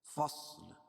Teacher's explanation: صاد کو موٹا پڑھیں گے کیونکہ حروف مستعلیہ میں سے۔ کان میقاتا، می یا ساکن سے پہلے زیر اس لیے مدہ، قا الف مدہ ہے، الف سے پہلے زبر اس لیے الف مدہ ہوگا۔